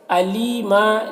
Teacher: لی میں یا مدہ ہے، اسے ایک الف کے برابر کھینچیں گے